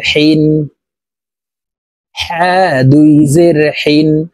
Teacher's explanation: হা হরফ হলকের মধ্যখান থেকে উচ্চারণ হবে, কারণ হার মখরাজ হলকের মধ্যখান থেকে হবে।